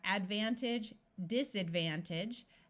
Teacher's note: although the word by itself would be age, the suffix is pronounced more like idge